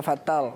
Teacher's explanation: آپ نے را کو موٹا کیا، تا کو بھی موٹا کر دیا. ہاں، تا کو باریک پڑھنا